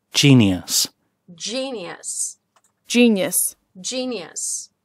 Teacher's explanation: Здесь стоит только «шва» и ударение на первый слог.